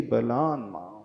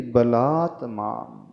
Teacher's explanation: चूंकि उसके पश्चात माम था तो त का वहां पर न हो गया